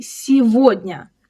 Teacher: You might expect to say сегодня, since you can see the word год, meaning year, right inside it, but we don't say it that way at all. The g here turns into v. We say сегодня.